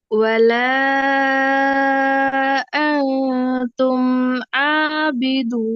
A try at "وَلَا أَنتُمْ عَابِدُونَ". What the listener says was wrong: இன்னும் கொஞ்சம் பின்னுக்கு போகணும். இன்னும் கொஞ்சம் பின்னுக்கு போகணும். இன்னும் கொஞ்சம் தொண்டையிட பின்பகுதியிலிருந்து வரணும். ஆபிதூன். ஆபிதூன். கொஞ்சம் பின்னுக்கு இருந்து வரணும்.